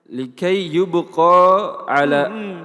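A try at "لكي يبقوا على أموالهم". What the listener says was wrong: Kan ada waw. Kan ada alif. Artinya karena ada alif hilang, dia tetap fathah. Tapi kan ada waw, bunyinya yubqau.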